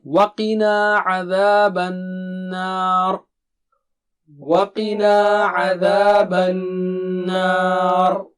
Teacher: نون پر تشدید ہے تو اس کا مطلب غنہ 2 حرکت